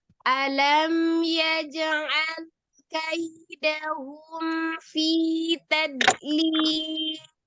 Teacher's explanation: Kalau dilihat dari sifat yang tengah-tengah, tawassut atau bainiyah, itu selain dari huruf mim, itu kan ada termasuk salah satunya huruf lam. Nah, lam sukun itu juga dia setengah mengalir ya